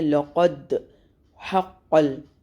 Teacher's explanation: اس پہ ہم نے قلقلہ کرنا ہے، یعنی کہ باؤنس کرنا ہے، ہلانا ہے، تھوڑا سا کھڑکھڑانا، ہلانا، دبانا. قلقلہ باؤنس کرنے کو قلقلہ کہتے ہیں.